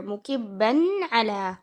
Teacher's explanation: Now you see that the tanween is followed by ayn. So this is idhar. You make the noon clear.